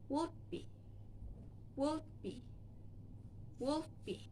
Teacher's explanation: The plosive consonant D is right before consonant B, so it can be unreleased. When you speak the sound, you need to touch your tongue right behind the inside of your upper teeth and stop, and then you move to the B sound. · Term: unreleased plosive consonant